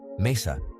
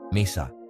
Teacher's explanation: ends in a vowel so we stress the second to last syllable